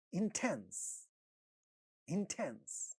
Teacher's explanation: The second syllable is getting stressed, and in initial position you have ta, so that is getting aspirated